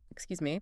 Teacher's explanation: if you use a sharp, slightly louder tone, excuse me, that's clearly demanding attention